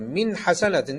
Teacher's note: hiçbir şekilde gizleme yapmadan genizden Ses çıkarmadan ve nun harfi a harfi ne çevrilmeden açıkça normal bir nun